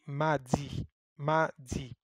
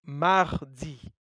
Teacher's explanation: You can hear an “R” inside after the “A”. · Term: R sound